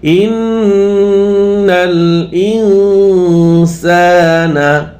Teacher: হামজা নুন জের ইন ইকফা গুণা হবে